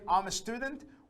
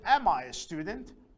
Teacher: notice the tone changes the intonation changes because now we are asking a question